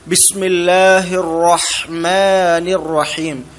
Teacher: റാ തഫ്ഖീമുള്ള അക്ഷരമാണ്, അഥവാ സ്വരഭാരത്തോടു കൂടി പറയണം, തഫ്ഖീമോട് കൂടി പറയണം. · ഹാ മീമിന് ഒക്കെ ഇസ്തിഫാലാണ് നാവ് താഴ്ത്തി പറഞ്ഞാൽ മതി